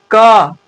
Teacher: तो आप क बोलिए, क, क को बोलते समय अंत में अ भी आ रहा है।